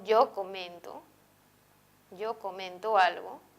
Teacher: cuando yo digo yo comento algo, el acento se va a ubicar en la penúltima sílaba, en esta. Y por lo tanto, la palabra va a ser grave.